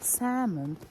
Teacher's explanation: salmon we don't pronounce l